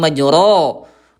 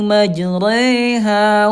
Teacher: condong miring ya antara fathah dengan kasrah menjadi kayak ke e majre. Majreha tidak majro gitu ya. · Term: imalah